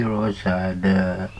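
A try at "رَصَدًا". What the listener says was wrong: Rosoda, bukan rosada. Wa min khalfihi rosoda.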